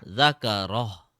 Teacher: ha should be more softer, gentler, deeper from the chest